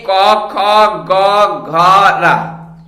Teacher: ये 5 व्यंजन कंठ से बोले जाते हैं और इन सब का एक वर्ग बनाया गया जिसका नाम रखा गया कवर्ग। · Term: कंठ वर्ण